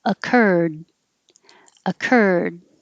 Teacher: And the past tense, not going to hear the D because your tongue is just going to stop the airflow